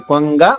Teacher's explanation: కొంగ గొంతు దగ్గరే వస్తుంది